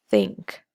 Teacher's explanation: your tongue is placed on your upper teeth which is why it's a dental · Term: theta